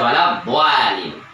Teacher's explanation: Maka dia alif terus tebal karena sebelumnya adalah huruf dot. Nggak bisa walad dolin, walad do. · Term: alif menjadi tebal